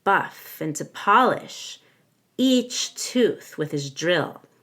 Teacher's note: we want to stress the word each here it makes it a little bit scarier